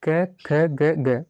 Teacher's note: इन सभी वर्णों का जो है उच्चारण गले यानी कि कंठ की सहायता से होता है।